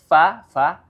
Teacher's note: huruf Fa makhrajnya ada di bibir bagian bawah yang bertemu dengan ujung gigi seri atas ini